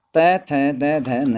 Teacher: दांत और जीभ द्वारा बोले जाते हैं, इसलिए इनको दंत्य कहा जाता है